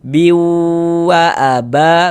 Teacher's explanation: Biu yang kita panjangkan itu di bagian biunya. Wa-nya pendek.